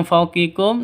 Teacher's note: Nun mati bertemu dengan fa. Cara bacanya samar didengungkan. Siap-siap ke huruf fanya-nya karena ini ikhfa haki ikhfa hakiki.